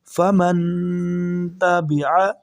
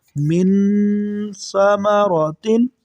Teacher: تا حروف ہلکی میں سے نہیں ہے، حمزہ، ہا، عین، حا، غین، خا میں سے نہیں ہے تو یہاں پر ہم غنہ کریں گے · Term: اخفا